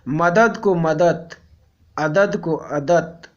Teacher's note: मुख सुख के लिए जब घोष ध्वनियों का अघोष उच्चारण किया जाता है तो अघोषीकरण होता है